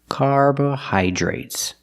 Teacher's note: The DR is pronounced with the j sound, plus the R together, jr. Carbohydrates.